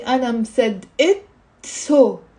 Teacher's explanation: So مصدقة has a T مربوطة that's silent, but whenever I attach a pronoun to it, it's not silent anymore.